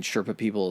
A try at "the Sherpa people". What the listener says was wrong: We got to slow down one of those words. It sounds like you're running them together. The Sherpa people.